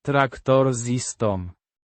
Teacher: pronounced tractor with stress on the second syllable